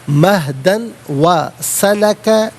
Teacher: مہدن میں دال پر دو زبر کی تنوین، اسے واو کے ساتھ ملا کر واو کی آواز کو ادا کیا جائے گا